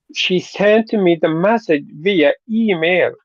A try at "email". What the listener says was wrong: Okay, it's not email, but email. E email. e e-commerce. The e always gets the emphasis in the situation.